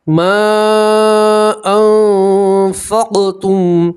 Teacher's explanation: اخفا کے 15 حروف میں نے آپ کو بتایا ان میں سے فا آ رہا ہے تو نون ساکن کا اخفا کریں گے اور ایک الف کے برابر گننا بھی کریں گے